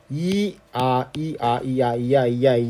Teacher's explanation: 그러니까 이 플러스 아가 야합니다. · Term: 이중 모음